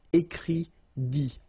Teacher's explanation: Okay, remember, you put this T, you don't pronounce it.